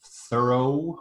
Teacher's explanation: We have thorough, where it's an o diphthong, double vowel sound.